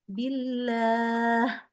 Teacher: di akhir h-nya tuh kita hembus lagi udara